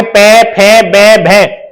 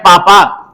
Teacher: अब ये लिखा जाए पापा, तो पापा बोलने पे क्या होंगे, दोनों ओष्ठ आपके मिलाने पड़ेंगे